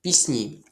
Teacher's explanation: Чому у цьому слові буде звук сі м'який? Тому що це уподібнення за м'якістю.